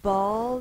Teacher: you hear the uh sound in between the B and the L